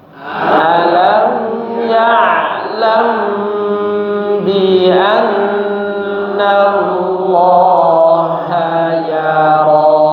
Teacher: Bi annallah, dengungkan juga huruf nun bertasydidnya ya.